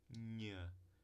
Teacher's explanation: nasal palatal não falei do vozeamento porque todas as nasais são vozeadas